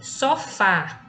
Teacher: perceba que esse fa ele é pronunciado com mais intensidade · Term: sílaba tônica